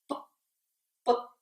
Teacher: Você vai fechar os 2 lábios, né? É uma oclusão, é um fechamento, para poder produzir o som.